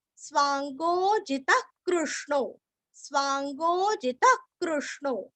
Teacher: ग और गो पूरा है, स्वांगो अवग्रह का हल्का सा खींचेंगे, जी रस्व और त के आगे विसर्ग का हल्का सा ख